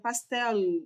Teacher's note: E se a pessoa dá uma puxadinha no L, ela não fez som de vogal, ou melhor, som de semivogal, ela fez som de consoante.